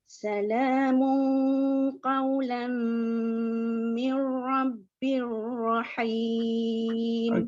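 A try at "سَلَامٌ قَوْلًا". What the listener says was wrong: Bir ni jangan lama, nanti dia macam bunyi berdengung pula. Kalau kita tak perhati dia akan mir rabbir. Kalau lama tu dia akan jadi seolah-olah ada kedengungan kat situ.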